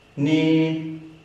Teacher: First tone, high up and straight. Ni. Now the way I remember the first tone is, if you're familiar with the scales, it's like the scale mi from do, re, mi, ni.